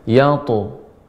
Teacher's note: dibaca dengan qalqalah yang karena dia huruf isti'la sehingga dibaca dengan lebih tebal